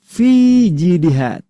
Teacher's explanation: Ya-nya tidak dibuang, ya-nya tidak dihapus. Tetap dibaca karena tidak bertemu sukun di depannya huruf hidup ini.